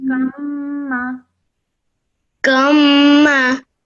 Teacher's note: hold the sound in your nose for 2 seconds, then you join the kaf to the mim.